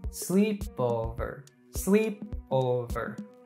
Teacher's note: the pitch typically Rises slightly on the stressed syllable sleep and then Falls gradually on falling syllables o and verb sleepover sleep over in the